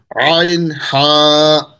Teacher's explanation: দুই নম্বর মাখরাজ হলকের মধ্যখান হইতে